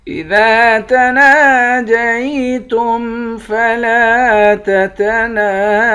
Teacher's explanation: ذال کے بعد الف ہے اور نون کے بعد بھی الف ہے، ان دونوں کو 1 الف کے برابر کھینچیں گے۔ لام کے بعد الف ہے، اس کو بھی 1 الف کے برابر، اور نون کے بعد الف ہے، اس کو بھی 1 الف کے برابر کھینچ کر پڑھیں گے۔